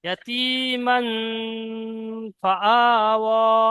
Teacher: মিমের উপরে জবর তানবিন এসেছে, তানবিনের পরের অক্ষর হরফে ইকফার মধ্যে 15টি অক্ষরের মধ্যে ফা এসেছে, তাই তানবিনের আওয়াজকে নাকে তুলে একালি পরিমাণ গুণনা করে পড়তে হবে